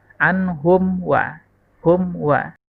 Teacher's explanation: Karena ada mim sukun bertemu dengan huruf waw, mim sukun bertemu dengan huruf waw, maka hukum membacanya izhar syafawi, dibaca jelas tidak dengung.